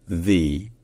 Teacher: lorsque vous mettez l'emphase, mettez l'accent sur ce mot-là, ça se dit the. Donc avec un i qui est bien appuyé, the.